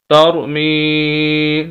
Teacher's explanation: हम यहाँ पर मीम को खींच रहे हैं, लंबा कर रहे हैं, तौर मी। वजह उसकी ये कि या मद्दा है।